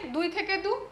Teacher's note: দুই থেকে দু স্বরধ্বনির লোপ হলো